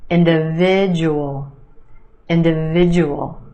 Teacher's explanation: word emphasis on the third syllable that is sound individual individual the second syllable is where you have the schwa